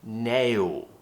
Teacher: Nail is quite a difficult word to pronounce because we have a diphthong, A, and then we're finishing with a dark L